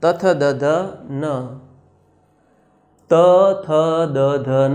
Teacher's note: આ 5 વ્યંજન જ્યારે આપણે બોલીએ છીએ ત્યારે આપણી જીભ આપણા ઉપરના દાંતને, દંત્ય દાંતને સ્પર્શ કરે છે. એટલા માટે એ દંત્ય વ્યંજન છે મિત્રો.